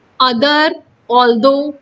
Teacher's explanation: इन सारे वर्ड्स में TH की साउंड द आ रही है